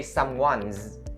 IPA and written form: ˈsʌm-wʌnz (someone's)